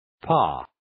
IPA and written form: pɑː (Pas)